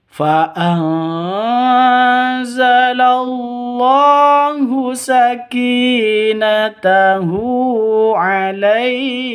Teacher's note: Sakinatahu, ki panjang 2 ketukan karena ada ya mati. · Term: mad asli